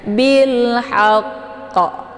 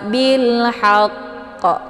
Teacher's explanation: karena di sini ada tasdidnya maka kita harus sempurnakan tasydidnya dulu baru dipantulkan hurufnya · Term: qalqalaof kubra